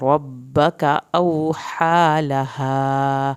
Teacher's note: औ वाव साकिन को थोड़ा खींचे, हा को हल्क से अदा करना है, हा की खड़ी ज़बर को खींचे, लहा अलिफ को पूरा पढ़ना है।